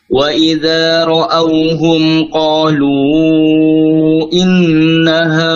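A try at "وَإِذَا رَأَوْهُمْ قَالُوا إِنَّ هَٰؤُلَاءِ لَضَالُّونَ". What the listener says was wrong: Gunahnya panjangkan dulu. Innaha. Tarik nafas dulu.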